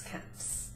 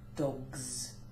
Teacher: Whereas you would say dogs, and the G of dog, G, uses your voice, and therefore the S gains voice and turns into a Z